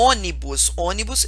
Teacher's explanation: ônibus é uma proparoxítona porque a antepenúltima sílaba mais forte · A antepenúltima, que é a sílaba mais forte, inclusive ela é até acentuada